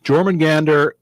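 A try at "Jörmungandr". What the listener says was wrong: You're not pronouncing the umlau properly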